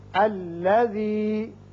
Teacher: اب یہ چونکہ مشدد ہے، یہاں عارضی طور پر ہم الف کے اوپر بھی زبر لے آئیں گے اور اس کو الف زبر کر کے الذی کر کے پڑھیں گے